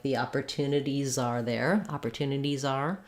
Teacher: You'll hear that Z more clearly if you're linking to another word